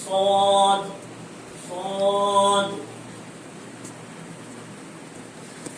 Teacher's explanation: صاد کا مخرج زبان کی نوک ثنایا سفلا کا کنارہ